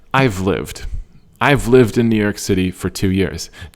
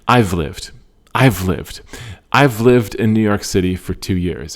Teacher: The I and the have, they kind of move together. They fall into each other. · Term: slight F sound